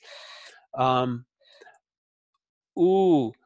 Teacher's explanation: and push especially for a British speech your speaker push ooh lips are pushed out a little bit more it's held twice as long